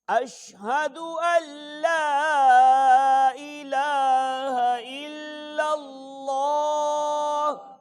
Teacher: یہ لام جو الا اللہ کا لام ہے نا یہ پر پڑھا جائے گا، پچھلا لام نہیں پڑھا جائے گا۔